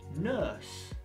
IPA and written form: nɜːs (Nurse)